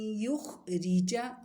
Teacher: را کو باریک پڑھیں گے کیونکہ را کے نیچے زیر ہے